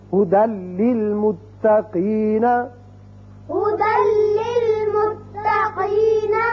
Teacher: تنوین کی مثال لام کی هُدًى لِّلْمُتَّقِينَ، هدى للمتقين. یعنی دال کی ایک زبر لام سے ملے گی اور بغیر غننے کے پڑھا جائے گا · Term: ادغام بغیر غنہ